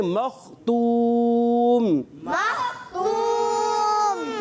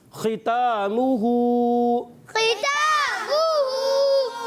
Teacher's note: خا کو اچھے طریقے سے پڑھیں گے حلق کے اوپر والے حصے سے. اور کھڑی حرکات دیکھیے تا پر اور ہا کے اوپر, کھڑا زبر ہے تا کے اوپر اور ہا کے اوپر الٹا پیش ہے, تو دونوں کو ایک الف کھینچ کر پڑھیں گے.